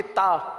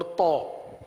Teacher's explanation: تا کو باریک کر لیں تو کو پر کر لیں. اگر ہماری تا تی تو آگے بھی تا تی تو کی آواز نکلتی ہے تو اس کا مطلب ہم غلطی پر ہیں, ہمیں ان دونوں میں فرق کرنا ہوگا.